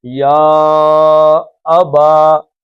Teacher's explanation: یا کے بعد حمزہ آ گیا ہے تو یہ اس کو کھینچ کے آپ نے 4 حرکتیں کریں